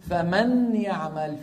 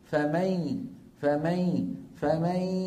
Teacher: الان انتم عم تسمعوا صوتين صوت خارج من الفم وهو الياء وصوت خارج من ال فتحتي الانف يعني من الخيشوم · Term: ادغام بغنه